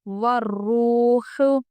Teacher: دیکھیے تشدید والے حرف کو اچھا سختی سے پڑھیں، اور یہ واو ساکن سے پہلے پیش ہونے کی وجہ سے ہم اس کو کھینچیں گے کیونکہ یہ واو حروف مدہ ہے۔